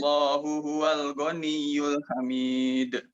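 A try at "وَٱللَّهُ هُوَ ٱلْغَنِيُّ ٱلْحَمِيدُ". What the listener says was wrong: Wa-nya jelaskan lagi. Wallahu.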